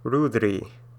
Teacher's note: It's a little softer. This is like a Spanish R, not a rolling R, but just a hard trilled R.